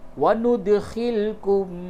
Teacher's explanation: دال میں قلقلہ کیجئے، دال ساکن ہے